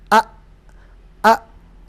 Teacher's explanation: Ketika hamzah sukun itu pita suaranya menutup.